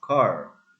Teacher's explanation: It is rotic because of the r at the end is clear pronounced car. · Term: rhotic